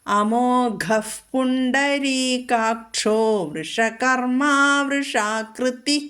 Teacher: ഇവിടെ പുണ്ടരീകാക്ഷോ എന്ന് പറയുമ്പോൾ ഡ മൃദുവാണ്.